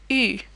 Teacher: like a very rounded e sound it's pronounced you can try starting off with a rounded o sound and then glide into an e sound while still keeping your lips in a rounded shape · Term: the u sound